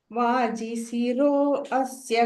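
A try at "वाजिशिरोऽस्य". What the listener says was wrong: அந்த அ வந்து சைலண்டா போயிடும் சோ ஷிரோஸ்ய அப்படின்னு சொல்லிடலாம் சேர்த்து சொல்லிடலாம்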